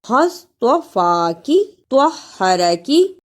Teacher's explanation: صاد کی جگہ پر سین اور طوا کی جگہ پہ تا نہیں آنا چاہیے